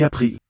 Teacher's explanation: Sounds aspirated, that P in april.